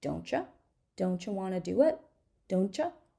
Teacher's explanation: don't you with T it's going to be CH